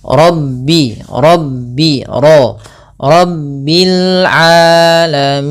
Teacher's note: pada lafal ro ini juga tebal yaitu ra tafkhim kita baca dengan bacaan tafkhin rabbio Rabbil alamin.